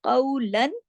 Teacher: قاف موٹا بھی ہے اور قاف واولین کے ساتھ ہے